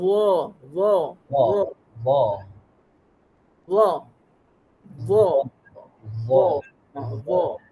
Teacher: hujung lidah dikeluarkan sedikit dan ditekan ke hujung gigi atas